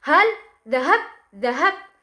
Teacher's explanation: tekanannya terjadi pada lafaz hal, dhahab, hab. Di sini hab di sini memiliki suku kata yang apabila diujarkan itu memiliki suku kata yang sangat berat.